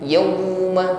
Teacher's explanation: Kalau waw sukun yauma lin, ucapkan dengan mudah, tidak ada tekanan. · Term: huruf lin